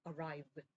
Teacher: v로 끝나죠. 그렇다면 v는 우리가 유성음이었죠. 그러면 같은 유성음인 드로 소리를 내게 됩니다.